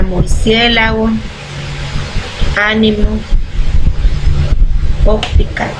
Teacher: palabras que se lleva el acento prosódico en la antepenúltima sílaba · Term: esdrújulas